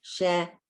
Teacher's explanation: The first one is breathy. It's the hey. Shehecheyanu. And the second one is the gargle one. The guttural sound.